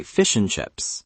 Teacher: The and basically disappears.